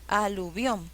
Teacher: La sílaba que lleva la mayor fuerza de voz es bión. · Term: sílaba tónica